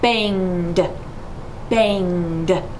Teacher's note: It's definitely voiced. So when I say banged, I'm going to drop it like a d.